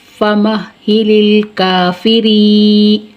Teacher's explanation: فا زیر فی، را یا زیر ری. یا ساکن سے پہلے زیر ہے، یا مدہ کھینچ کر پڑھیں گے